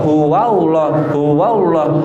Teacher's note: Wanya tipis, Allahnya tebal.